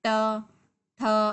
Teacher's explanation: मूर्धा उच्चारण स्थान होता है तो इसमें जो हमारे टंग होती है, हमारी जो जीभ होती है, वो उल्टी होके उच्चारण होता है।